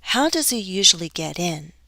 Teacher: This is how does he enter, get in, the phrasal verb, stress on the particle.